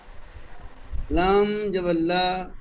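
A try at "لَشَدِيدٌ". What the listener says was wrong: লাম, লাম টান হয়ে যাচ্ছে, লাম টান হয়ে যাচ্ছে, লাম সবর লা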